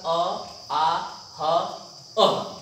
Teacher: अ, आ, ह, अह, ये जो इसका उच्चारण होता है कंठ से होता है